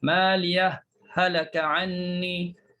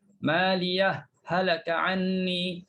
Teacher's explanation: Bila kita izharkan ha, maka kita kena buatkan saktah di situ.